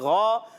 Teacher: غین جو ہے موٹے حروف میں سے ہے، حروف مستعلیہ میں سے ہے، موٹا کر کے پڑھیں گے، اور یہ یاد رکھیں جب کبھی اس کے بعد الف آ جائے، جب بھی موٹے حروف کے بعد الف آتا ہے تو کیا ہوتا ہے، وہ الف موٹا پڑھا جاتا ہے ماشاءاللہ۔